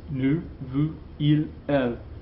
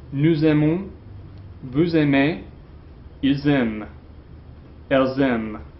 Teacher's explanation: But if your verb starts with a vowel sound, okay, we have what we call liaison, okay? These S's, which are typically silent, are now pronounced as Z's at the beginning of the next word